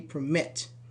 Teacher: you say permit. Mit is stressed.